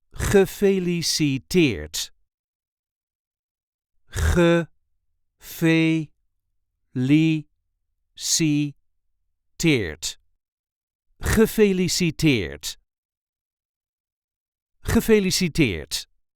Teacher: There is a light emphasis on the last syllable.